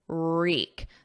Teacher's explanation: There's no W, it's silent. So it starts on a R